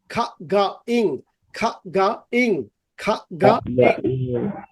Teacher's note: যেমন খা গা ইং, তুমি একটু মুখের ভিতরে চিন্তা করো, খা গা ইং, জিহ্বার পিছনের অংশটা গলার মধ্যে লাগে যাচ্ছে